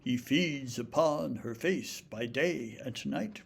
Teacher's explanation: pronouns like he aren't usually given as much stress as a nice one-syllable Anglo-Saxon verb like feeds. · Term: iambic pentameter